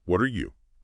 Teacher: What are you? That T in what flaps becomes a soft D linking to R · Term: flap t